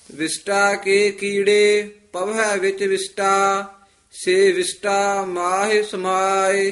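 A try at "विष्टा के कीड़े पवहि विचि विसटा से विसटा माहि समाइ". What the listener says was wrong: विष्टा शशा नहीं बोलना, ससा बोलना।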